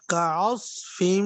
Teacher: کاف باریک ہے، عین واضح کر کے، آگے صاد موٹا آ رہا ہے